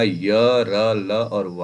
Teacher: इनका व्यंजन और स्वर के बीच की स्थिति होती है और इसी वजह से इनको हम अर्धस्वर भी कहते हैं